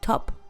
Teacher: T and D are dental